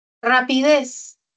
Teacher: Tiene la mayor fuerza de voz en la última sílaba. En la última, rapidez.